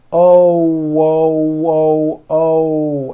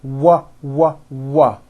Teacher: you notice how my lips are all the way forward and the front of my lips are opening and closing like the front of a trumpet oh whoo whoo oh and you hear that little W sound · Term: o sound